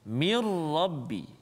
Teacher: Kesempurnaan huruf nun bunyi itu hilang masuk dalam ra. Mirrabbi, jangan min rabbi, salah. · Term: idgham bila gunnah